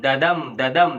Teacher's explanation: the first syllable is unstressed or weak syllable and the second one is stressed